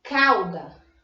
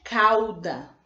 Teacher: Olha, o A soa mais forte, cauda. Então, uma vogal e uma semivogal. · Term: ditongos